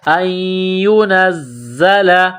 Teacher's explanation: ان ينزل، نون کو زا کے ساتھ ملانا ہے، زا میں سختی کرنی ہے، سیٹی کی آواز پیدا کریں گے · وللمشرکین، حمزہ کو نون کے ساتھ ملانا ہے، نون ساکن کے بعد یا ہے، مشدد ہے تو نون ساکن پر غنہ کریں گے